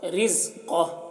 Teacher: را کو باریک پڑھ رہے ہیں، قاف کو پور پڑھ رہے ہیں